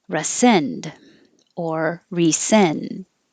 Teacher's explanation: the re is not stressed so it can change to r